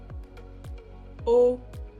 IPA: o